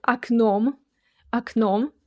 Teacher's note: the first O sounds like A because the stress falls on the second syllable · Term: unstressed O